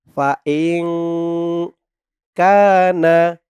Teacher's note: সাকিনের পরে ইকফার 15 হরফের এক হরফ কাফ আসছে ফাং কানা কা জবরের পরে খালি আলিফ এক আলিফ টান